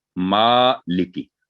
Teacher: सिर्फ मा की आवाज 2 सेकंड लंबी करेंगे और ली और की 1-1 सेकंड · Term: खड़ी जबर